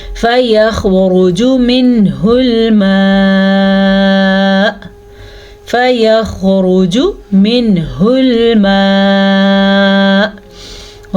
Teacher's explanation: را پہ پیش ہے، جیم پہ پیش ہے تو ہم ان دونوں کی مقدار کا دھیان رکھیں گے، ان کو قطعاً لمبا نہیں کریں گے ۔ جوڑ دیکھیں، فا زبر فا، یا زبر خا، یخ، فیخ،